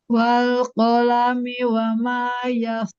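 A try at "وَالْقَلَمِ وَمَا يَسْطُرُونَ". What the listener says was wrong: Huruf qofnya bulat lagi.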